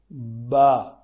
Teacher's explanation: ہونٹوں کے تر حصے آپس میں ملے تو با ادا ہوتا ہے